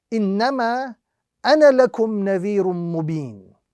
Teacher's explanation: That alif would only be pronounced if we are continuing our recitation and we are not stopping on the word ana. So if you are reading this phrase in a continued recitation, we'll be reading it without the alif